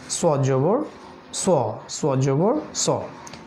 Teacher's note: এক্ষেত্রে মুখটা সামান্য গোল হবে